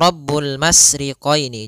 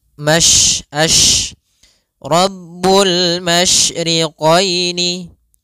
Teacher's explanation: Tafasyi adalah salah satu sifat yang terkandung di dalam huruf shin, yaitu menyebarnya suara. Sehingga jangan dibaca Rabbul masriqaini, jangan dengan huruf sin, tapi dia huruf shin.